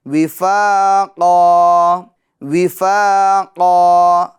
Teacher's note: قاف کو ہم پور کریں گے کیونکہ یہ حروف مستعلیہ میں سے ہیں، اور حروف مستعلیہ کو ہر حال میں پور یعنی موٹا پڑھا جاتا ہے